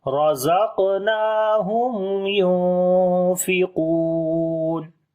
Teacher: نون ساکن کے بعد فا آ گیا اخفا کریں گے باریک اخفا ہوگا